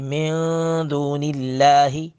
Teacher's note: نون ساکن کے بعد دال ہے، اخفا کریں گے